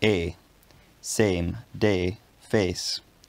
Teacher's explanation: in my dialect of english in words like same day face a scottish speaker might pronounce these words with a monophthong